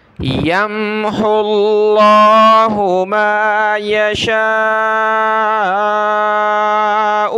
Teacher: یا میم زبر یم، ہا کو لفظ اللہ کے ساتھ ملا ہے، اس واو کو نہیں پڑھنا۔